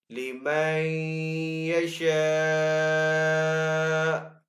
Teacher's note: وقف کرنے کی صورت میں حمزہ کو ساکن کریں گے